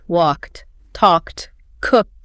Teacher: They compress the end of the word into a sharp unvoiced T sound.